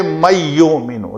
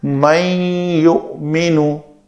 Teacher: اس کو ناقص کرنا ہے، نون کی آواز آنی چاہیے لیکن نون کا یا میں ادغام بھی ہونا چاہیے۔ من یؤمنو، نون کی آواز ناک سے ایسے آ رہی ہے۔